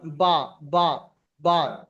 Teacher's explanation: দুই ঠোঁটের ভিজে অংশ মিলিত উচ্চারণ হয় বা বা বা। দেখেন উপরের ঠোঁটের হালকা ভিজে অংশ নিচের ঠোঁটের হালকা ভিজে অংশ দুটো একত্রিত হলে কি হচ্ছে?